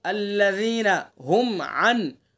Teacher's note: ہم کو جلدی سے، ہم کے اندر اظہار ہوگا میم ساکن کا